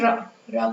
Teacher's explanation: र को प्रकंपित वर्ण कहते हैं।